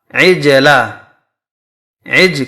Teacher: قلقلہ کے 5 حروف ہیں، قوف، تو، با، جیم، دال۔ جب ان حرف پر ساکن یعنی جزم آ جائے تو وہ حرف اپنے مخرج سے ٹکر کھا کر الگ ہو جاتے ہیں